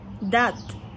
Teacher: La voyelle A, date, c'est ouverte antérieure, étirée et orale.